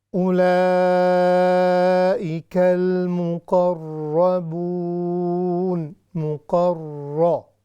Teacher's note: یہ جو را ہے ہیوی ہے، چونکہ اس کے اوپر فتحہ ہے، مشددہ ہے، اسی لیے ہم نے را مفتوحہ اس کو موٹا کر کے پڑھنا ہے۔